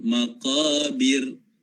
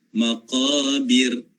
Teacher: Sebab huruf sebelum ra ni berbaris di bawah. Maqabir, nipis kan ra. Tapi ra tu ada getaran. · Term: takrir